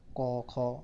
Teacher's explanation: का वर्ग हमने बताया था अभी आपको, कंठ ध्वनियाँ होती हैं, कंठ से बोले जाते हैं।